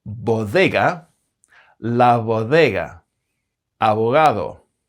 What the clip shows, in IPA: β, ð and ɣ